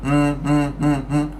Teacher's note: Tempat parking dia khaisum. Khaisum ni kat hidung. Tempat parking dia kat hidung. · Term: ghunnah